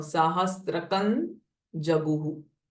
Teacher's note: Nam Nam Sahasrakam Jaguhu. But because Ja, the next word is starting with Ja, this Ma will change it to Na